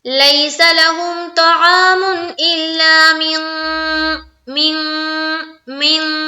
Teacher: اخفا، یعنی کہ ناک میں اپنی آواز کو چھپانی ہے